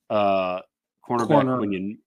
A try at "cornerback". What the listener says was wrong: Cornerback. Corner. Emphasis on the Corner.